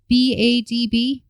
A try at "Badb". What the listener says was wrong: Badb. Bod. I don't think you pronounce that last B. I think it's just bod.